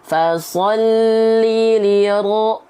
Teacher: Huruf ro di sini yang harusnya kita baca fathah itu dengan vokal A, tapi kenapa menjadi O? Karena huruf ro harus dibaca tebal ketika berharokat baris A, baris atas.